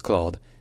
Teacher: Claude becomes Claude, with a slightly more open O sound